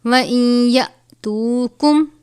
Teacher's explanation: نون ساکن کے بعد حروف یرملون میں سے یا ہو تو غنہ کرتے ہیں